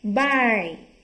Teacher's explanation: Bay thì không có bật hơi.